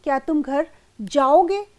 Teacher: इस वाक्य में जाओगे का उच्चारण कुछ ऊंचे स्वर में होता है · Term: स्वराघात